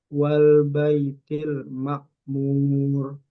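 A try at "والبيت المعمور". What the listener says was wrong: Ma' bukan makmur tapi ma'mur.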